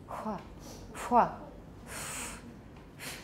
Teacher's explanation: A labiovelar fricative. We already have a labiovelar approximant in English, wuh. All we have to do is make it a fricative.